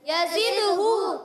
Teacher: اور یزدہو, یزدہو میں یہاں پر زبر زا دال زیر زد, زا کی ادائیگی سیٹی کے ساتھ اور دال میں قلقلہ ہوگا